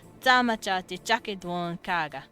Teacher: I said they would probably emphasize the second syllable, but when I'm speaking it, it feels more natural to emphasize the first syllable.